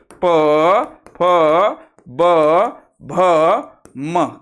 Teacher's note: ज्या वर्णाचा उच्चार करताना ओठांची जास्तीत जास्त हालचाल होते ओठ एकमेकांना स्पर्श करतात त्यांना ओष्ट्य वर्ण म्हणतात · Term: ओष्ठ वर्ण